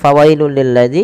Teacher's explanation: suara tanwin yang langsung dimasukkan ke huruf lam karena ia idgham bila gunah